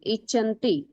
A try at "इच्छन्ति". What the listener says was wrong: च नहीं बोलना है, इच्छन्ति। क्या करना है वहां पर?